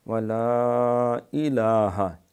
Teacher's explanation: الف مدہ کے بعد حمزہ جو ہے الہ کی آئی ہے، اس وجہ سے یہاں 3 سے 5 الف ہم کھینچ سکتے ہیں۔ ولا الہ، الہ نہیں الہ، لام کے اوپر کھڑی زبر ہے، الہ الا اللہ، یہ پھر لام موٹا ہے۔